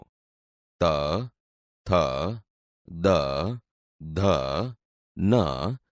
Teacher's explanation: ત થ દ ધ ન જે જેવા વ્યંજન બોલતી વખતે જીભ દાંતને અડે છે આથી તે દંત્ય વ્યંજન છે